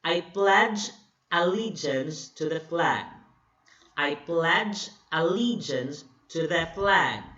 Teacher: So, I is unstressed, the first word, the first syllable. Pledge is another syllable, and that's stressed. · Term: iambic tetrameter